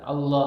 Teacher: menyebutkannya dengan tafhim tebal ya dengan suara yang tebal